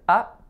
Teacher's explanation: Our next word is up. That's a schwa. It's got to be really, really, really short.